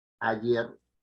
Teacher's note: El golpe de voz predominante está en la última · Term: palabra aguda